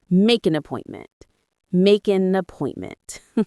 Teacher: The stress is on the second syllable of appointment.